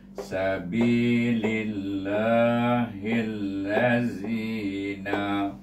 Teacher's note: Ha pena bertemu pula dengan alif lam syamsah, maka masukkan ha itu ke dalam lam yang bertasydid, bunyinya hil. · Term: idgham syamsi